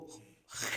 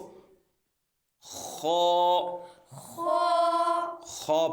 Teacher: यह हरफे हलकी है हल के ऊपर वाले हिस्से से ये अदा होता है तो इसको ख ख ख पढ़ेंगे क्या पढ़ेंगे ख ख दाल